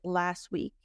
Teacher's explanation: we're emphasizing last you hear the te a little more however if we're not emphasizing last a lot of times Americans will drop the T and it sounds like last week so sometimes these are subtle